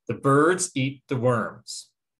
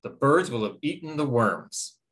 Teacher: hear how the function words get squished or grouped in with the stressed unit or the stressed word near them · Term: stress-timed language